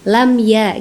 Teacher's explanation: Dan ini huruf hijayahnya yaitu ya. Maka dibaca jelas jangan didengungkan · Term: izhar syafawi